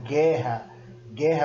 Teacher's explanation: Você não ouve o U aí é suprimido, tirado praticamente na pronúncia, mas ele existe na escrita. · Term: dígrafo GUE